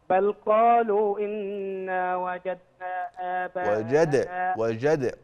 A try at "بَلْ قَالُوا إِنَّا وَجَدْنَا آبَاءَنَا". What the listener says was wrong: قلقل الدال.